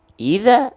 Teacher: dibacanya idza dengan vokal A, berarti dia huruf tipis